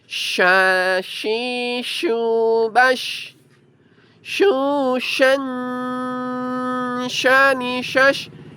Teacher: Kedua sisi lidah tengah digigit. Sambil seperti caranya mengusir ayamnya. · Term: huruf shin